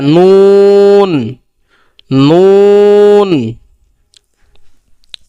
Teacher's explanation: আর নুন কোথা থেকে উচ্চারণ হবে? যে জিহ্বার আগা তার বরাবর উপরে তালুর সঙ্গে লাগাইয়া